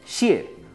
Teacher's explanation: cuarto tono, descendente, casi como con tilde.